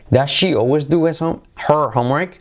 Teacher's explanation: Does she always do her? Se convierte en doer.